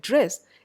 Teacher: the place of articulation gets shifted slightly so it becomes a post alveolar sound it is still an alveolar sound but not a full alveolar